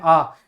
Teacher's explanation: विवृत स्वर में मुख पूर्ण तरह खुल जाता है। जिस प्रकार जीवा में प्रयुक्त होने वाले भाग के आधार पर मध्य भाग में अ आता है, उसी प्रकार हम देखते हैं कि विवृत स्वर में एक ही स्वर आता है, वो है आ।